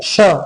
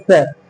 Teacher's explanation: सीटी टाइप की अगर कुछ साउंड आ रही है तो वो ये है श, और सीटी नहीं बज रही है, हल्की साउंड सीटी की नहीं आ रही है तो ये है स।